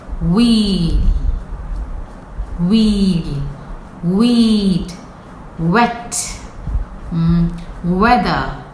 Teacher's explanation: You see, the lips first come together and then expand. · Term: wa sound